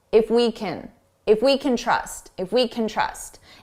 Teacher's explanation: When can is the auxiliary verb, so it's not the main verb, we reduce this to kin, and it's very unstressed sound.